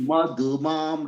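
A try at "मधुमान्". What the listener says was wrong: No, your du is going down as well. Just listen to me a couple times. Ma, dhu, mam, ma, dhu, mam.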